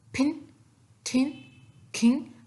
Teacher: जो voiceless sounds होती हैं जैसे कि है फिन ठिन खिंग, इनमें जो हमारे पास होती है एस्पिरेशन होती है